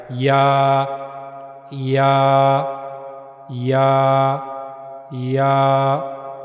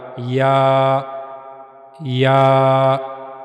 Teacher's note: जबान का दरमियानी हिस्सा मुंह के ऊपर वाले हिस्से की तरफ उठेगा। वहां से या अदा होगा।